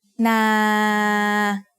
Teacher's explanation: This is a live syllable because if I wanted to, I could extend the length of the word and say na. As long as I don't run out of breath, the sound goes on forever, so it is a live ending.